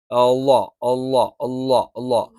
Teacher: നാവിന്റെ തല മേലെ മുൻപല്ലിന്റെ താഴ്ഭാഗത്ത് വെച്ചുകൊണ്ടാണ്